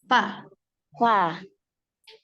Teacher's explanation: Giginya, gigi seri atas, ujung gigi seri atas ke perut bibir bagian bawah. Fa, ditempelkan.